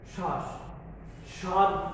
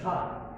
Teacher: তো আমরা 1 নম্বর সূত্রে দেখছি যে পদের আদ্য বা শুরুতে ব ফলা অনুচ্চারিত হয়। অর্থাৎ পদের শুরুতে ব ফলাটা উচ্চারিত হবে না।